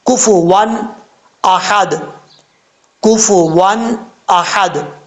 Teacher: اس ہا کو بھاری ساؤنڈ کے ساتھ نہیں پڑھنا، باریک ہا کے ساتھ پڑھا جائے گا